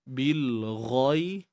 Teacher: ghain kita kena tebalkan. Nak tebalkan macam mana? Angkat pangkal, pangkal lidah kan.